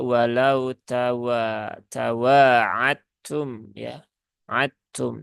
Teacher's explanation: ya dalnya benar-benar hilang begitu kan · Namanya idgham mutajanisain ya. Jadi tak dengan dal itu kan tempat keluarnya sama.